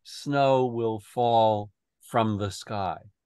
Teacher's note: So it's trochaic rhythm, the accent on the first syllable.